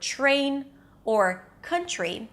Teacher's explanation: When the T appears before an R at the beginning of a word or the middle of the word, as in the word train or country, you don't hear a distinct T sound. So it doesn't sound like terrain.